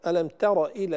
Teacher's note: ألم تر إلى ترى، التاء والراء، الراء مفخمة هنا لأنها مفتوحة لكن التاء ينبغي أن تبقى مرققة لأن التاء مرققة دائما.